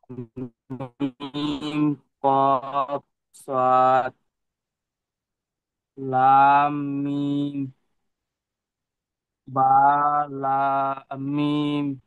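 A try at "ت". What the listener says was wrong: বা নয়, তা, তা মিম, তা এটা হলো তা মিম, জি।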